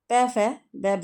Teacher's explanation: यह ओष्ठ के अंतर्गत आएगा